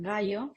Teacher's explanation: oclusivo velar sonoro, como en gallo